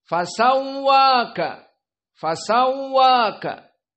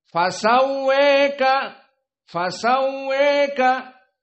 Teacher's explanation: Di sini dari usul qiraah Hamzah dibaca dengan al-imalah al-kubra pada fasawwaka.